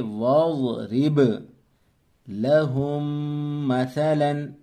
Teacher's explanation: یہ الف جو ہے یہ پڑھنے میں نہیں آئے گا، واو کو ملائیں گے ضاد کے ساتھ